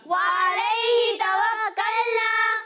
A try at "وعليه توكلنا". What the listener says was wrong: عین کی ادائیگی واضح ہونی چاہیے، ٹھیک ہے، علیہ نہیں، وعلیہ توکلنا، قل هو الرحمن آمنا به وعلیہ توکلنا۔